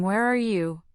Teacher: the pitch rises on you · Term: rising intonation